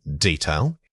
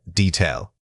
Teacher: Many speakers incorrectly substitute a long vowel sound here. Remember that the correct pronunciation requires keeping that first syllable quick and unextended.